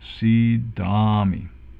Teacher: We have 1 long E and 1 long A.